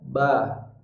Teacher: Ba ini makhrajnya adalah bertemunya dua bibir. Maka apabila bibirnya tidak menempel, maka pasti ba-nya tidak akan bisa diucapkan.